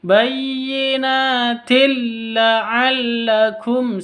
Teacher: Bayyinatin, na panjang 2 ketuk, 2 harokat. Tanwin bertemu dengan lam, cara bacanya masuk ke lam tanpa dengung.